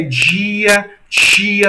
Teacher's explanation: o dorso da língua vai em direção ao palato, percebem? Então, a gente chama isso de palatalização do I.